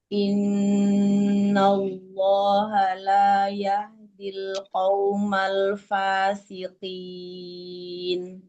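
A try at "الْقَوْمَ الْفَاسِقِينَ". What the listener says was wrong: Qaumal. Huruf qafnya tebalin, Mi.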